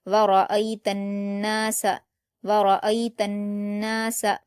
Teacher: यहाँ पर हुरूफ शमसी का कायदा है और नून पर जब तशदीद होती है तो उसको गुन्ना के साथ पढ़ा जाता है। नून पर अलिफ मद्दा है तो इसको 2 हरकत खींचेंगे।